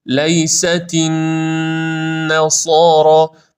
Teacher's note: نون النصارا به اندازه دو حرکت کشش پیدا می‌کنه